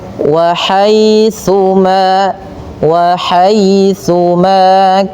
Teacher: hati-hati dalam melafalkan tsa jangan sampai terbaca dengan huruf sin ya. Dia agar sempurna daripada makhraj huruf tsa ujung lidah kita kita tempelkan dengan gigi atas ya.